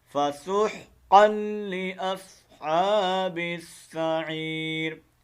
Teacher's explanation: اس قاف کو لام کے ساتھ ملا کر پڑھیں گے اور ادغام کریں گے، لیکن غنہ نہیں ہوگا، ٹھیک ہے، کیونکہ جو لام آ رہا ہے۔ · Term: ادغام بلا غنہ